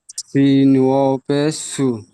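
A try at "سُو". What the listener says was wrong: আমি টান দিয়ে বলেছি নাকি বিনা টানে বলেছি, বলেন তো? হ্যাঁ, তো টান দিয়ে বলতে হবে, সু বলে আমি কতটা টান দিলাম আপনাকে বোঝানোর জন্য, আপনি সিন ওয়াও পেশ সু বলে ছেড়ে দিচ্ছেন।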